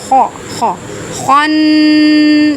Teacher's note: خا یہاں حروف مستعلیہ میں سے ہے، اس کو پر کر کے پڑھیں گے، موٹا کر کے پڑھیں گے